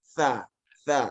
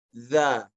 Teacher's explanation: yang satu disebutkan dalam kondisi hamas, dorongan angin, tha. Tha. Yang satu dengan jahar, za.